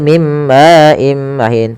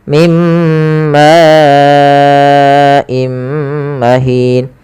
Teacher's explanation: Di sini ma awalnya dua harakat. Karena datang setelahnya hamzah, maka ini kita panjangkan sepanjang empat harakat. Maka dan tidak boleh dikurangi tidak boleh mim maim mahin tapi harus panjang empat mimma imahin. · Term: mad wajib muttasil